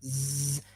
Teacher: So you see that the little obstruction is here in our tongue, zzz, and if you do it, you would feel where the obstruction of air is. Zzz, yeah, so it's somewhere in your tongue and the roof of your mouth. Yeah, so again, it's not a complete obstruction, but it's a slight one. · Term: friction consonants